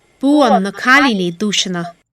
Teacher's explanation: this has a light quality in the L and the N